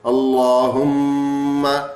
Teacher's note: اب جیسے یہاں یہ ہے نا اللہم، تو میم پہ تشدید پڑھیں گے، غنہ کریں گے اور پر کر کے بھی پڑھیں گے